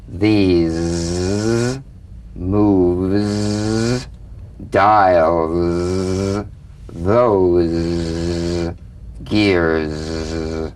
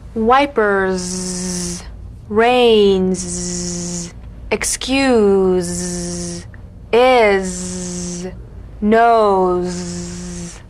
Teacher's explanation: feel a smooth, strong vibration in the teeth and in the front of the tongue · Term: Z